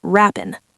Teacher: Drop the g in wrapping. It's rappin.